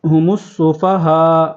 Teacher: ہا کے اوپر مد ہے تو اس کو مد پورا کریں گے، 4 الف